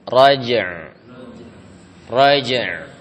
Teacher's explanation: Jadi suara ainnya itu enggak langsung terputus ya.